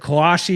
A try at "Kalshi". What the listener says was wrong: Kalashi and Kalshi, Trent. You're adding like extra letters.